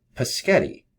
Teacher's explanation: Assimilation, making things similar is present in changing the G to a K sound by removing what is called voicing to make the G more like the S that precedes it in Paschetti. G and K differ only in voicing, which is vibrating the vocal cords.